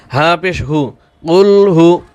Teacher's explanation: গলার আওয়াজ ছিড়ে দিয়ে বলবেন গলার আওয়াজটা একটু মোটা করে জোরে বাতাস বের করবেন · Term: বড় হা